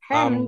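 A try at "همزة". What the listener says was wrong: eh lidahnya ke mundur terlalu mundur maju dikit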